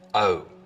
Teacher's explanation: the vowel sound in boat, most, hope starts with the tongue further forwards in the mouth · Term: Fronting